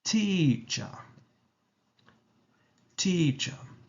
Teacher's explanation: T in a stressed manner and ch with the schwa in a relaxed tone. So it's teacher, teacher.